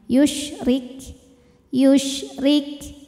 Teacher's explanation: untuk Kaf yang sukun anginnya keluarnya terakhir belakangan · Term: hams